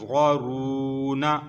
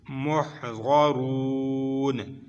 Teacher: तो यहाँ तक पढ़ा जाएगा मीम हा पेश मोह, ग़ा ज़बर ग़ा, मोह ग़ा, रा वाव पेश रू, मोह ग़ारू, नून ज़बर ना, मोह ग़ारूना। आगे वक़फ़ आ गई तो नून साकिन हो जाएगी